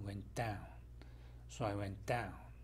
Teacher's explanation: So I went down 했을 경우에 T가 발음이 되지 않습니다.